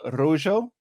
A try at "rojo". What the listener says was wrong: Wait, no, it's rojo. Not rujo.